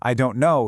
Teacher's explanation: And finally, we have the famous stop t in fast speech, especially in American English, that T at the end of a word like don't just disappears. It becomes silent.